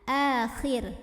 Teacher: Karena sebelumnya kasrah. Ra-nya tipis, pangkal lidah datar, ringan, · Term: dibacanya tarqiq